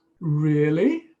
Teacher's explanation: With that rising intonation suggesting a question.